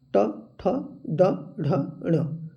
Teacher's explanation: ट वर्ग में मूर्धा का प्रयोग होता है।